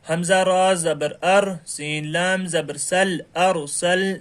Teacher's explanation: اس سبق میں را کو پر کر کے پڑھنا چاہیے۔